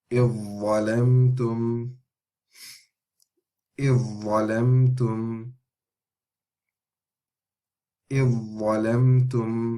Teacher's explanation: So we're missing the dhal completely.